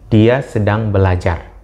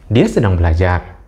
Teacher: Yang membedakan adalah nada akhir dari setiap kalimat. Yang pertama nadanya turun, dan kemudian yang kedua adalah nadanya cenderung tetap atau cenderung naik. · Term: intonasi